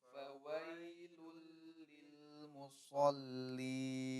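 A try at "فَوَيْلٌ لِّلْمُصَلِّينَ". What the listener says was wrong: Baik, perhatikan huruf fa-nya ya, ada huruf waw setelahnya. Jangan jangan keburu pengen mengucapkan huruf waw ya. Jadi fawo, la. Tapi dibiarkan di posisi normal si bibirnya ya, di bawah ya atau tetap di posisi normal.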